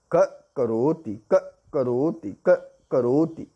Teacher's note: विसर्ग के बाद क आया है तो यहाँ पर यह जिह्वा मूल हो गया। तो जब इसका उच्चारण करेंगे क करोति, क करोति, क करोति, इस तरह से उच्चारण करेंगे।